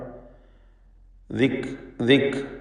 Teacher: ദിക്രി കാഫ് മഹ്മൂസും ഷദീദുമായ ഹർഫാണ്. ദിക് ദിക് എന്ന് കാഫിൻ്റെ ഉച്ചാരണം ശ്രദ്ധിക്കുക.